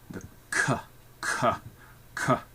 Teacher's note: the back of our tongue touch our soft palate